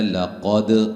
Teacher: لقد قاف کو موٹا، دال پہ قلقلہ